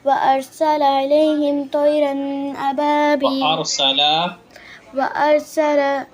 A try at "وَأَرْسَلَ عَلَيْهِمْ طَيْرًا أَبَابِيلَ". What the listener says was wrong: نہیں بیٹے علی عین پہ زبر وارسل علیہم پہلے سین پڑھا تھا آپ نے یا فا پڑھا تھا؟